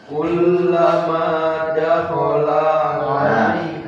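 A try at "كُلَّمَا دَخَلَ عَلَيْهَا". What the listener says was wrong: Hati-hati, dakhala nggak panjang, nggak ada tanda panjang. Dakhala alaihi pendek.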